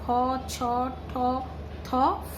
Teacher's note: বর্গের প্রথম ও দ্বিতীয় ধ্বনি উচ্চারণের সময় ধ্বনির সঙ্গে স্বরতন্ত্রের কম্পনের সুর মেশে না। কম্পনের সুর না মিশলে তাকে অঘোষ ধ্বনি বলে।